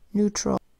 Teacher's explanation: an A that makes its unstressed schwa vowel sound and an L that says ul.